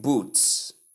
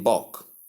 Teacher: Boot is long ooh sound whereas book is short sound. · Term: short ooh sound